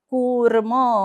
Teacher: कु वरती आघात कारण पुढे जोडा अक्षर